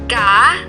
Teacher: konsonan dorsovelar dihasilkan pangkal lidah dan langit-langit lunak